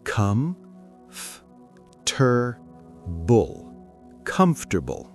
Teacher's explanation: The table part almost disappears. It becomes just bull at the end.